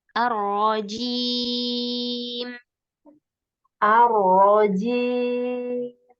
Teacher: Cuman untuk ro dengan jim, terutama di matnya jim, jangan ada suara hidungnya